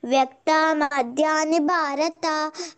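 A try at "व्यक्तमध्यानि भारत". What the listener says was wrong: ఒకటి ద్విత్య ఇక్కడ వ్యక్త వ్యక్త ఇట్లా దీర్ఘం తీసావు, ఇక్కడ తీయకూడదు. వ్యక్త మధ్యాని భారత, వ్యక్త మధ్యాని భారత అంతే.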